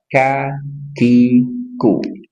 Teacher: kaf dari pangkal lidah lebih ke depan daripada makhraj huruf qof